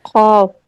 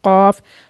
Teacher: जो उसमें खा का साउंड आ रहा है वो हटा के कॉफ। तो ये भी जो है हल्क, जो आपका जहाँ से आइन था उससे थोड़ा सा ऊपर आए, और जो हमारी ज़बान का लास्ट पार्ट है और जहाँ से गैन अदा होता है उसी के तकरीबन आसपास कॉफ का मखरज है।